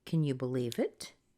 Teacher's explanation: on besides the rise at the end is the fact that three of the words and four of the syllables are unstressed